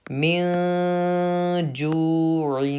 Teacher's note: تو نون کی آواز کو ناک میں چھپا کر پڑھنا چاہیے، تو ہم اسی لیے مین ناک میں چھپا کے پڑھ رہے ہیں۔ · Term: اخفا